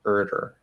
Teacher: So it has to be quick. I mean, it's a flap. I tap it. It has to be quick. But you just go right back into the position where you were.